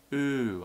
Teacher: I'm lifting the tongue backwards and up slightly.